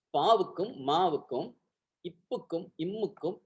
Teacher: ப ம இரண்டுக்குமே இதழ் ஒட்டும்